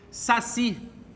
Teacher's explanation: Saci, o si é a sílaba tônica.